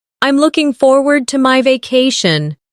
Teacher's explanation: Notice the smooth connection between looking and forward.